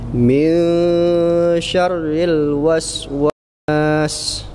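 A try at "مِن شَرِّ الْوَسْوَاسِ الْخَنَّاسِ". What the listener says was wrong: Sama satu kayak Pak Usman tadi, R-nya kurang ditahan. Syarril, ada takrirnya Pak.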